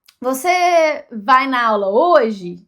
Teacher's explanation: vai meio que sobe no final né e no inglês muitas vezes não é assim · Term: entonação